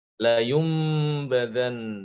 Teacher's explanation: apabila datang setelah nun sukun dan tanwin huruf ba maka nun sukun atau tanwin tadi itu diubah menjadi huruf mim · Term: iqlab